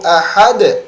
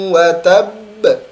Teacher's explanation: Sedangkan watab di situ ada tasydid, watabba. Maka pantulannya ahad langsung ahad. Sedangkan watab neken dulu baru mantul.